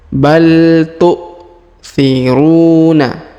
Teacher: huruf ru dipanjangkan dua harakat karena di depannya terdapat wau sukun